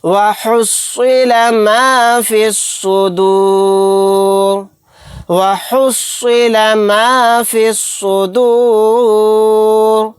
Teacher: یہاں پر سواد کو موٹا یعنی پر پڑھیں گے، فا کو ڈائریکٹ سواد میں ملا دیں گے کیونکہ سواد کے اوپر تشدید ہے۔